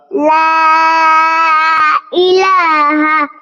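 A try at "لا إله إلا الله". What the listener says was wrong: এই তুমি লা বলতেছো, লা না তো বাবা। ল ইল্লাল্লাহু। লা হবে না, ল।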